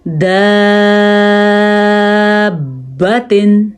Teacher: دال زبر الف مد با، داب، با زبر با، داب، تا 2 زیر 3، دابتن۔ با پہ جھٹکا پیدا ہوگا کیونکہ ویسے بھی حروف کلکلہ میں سے ہے اور آیا بھی مد کے بعد مشدد حرف ہے۔